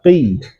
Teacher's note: huruf qof dasarnya tebal tapi dalam keadaan kasrah bukan tidak tebal, ketebalannya berkurang. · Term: qaf dalam keadaan kasrah